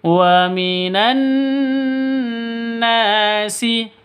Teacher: Nanya dibaca panjang karena ada alif, diawali dengan fathah. Mad asli atau mad tabi'i.